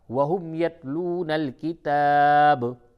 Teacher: جب اس جگہ پہ آپ وقف کریں گے تو با ساکن ہو جائے گا، اور جب با ساکن ہو تو اس پہ قلقلہ ہوتا ہے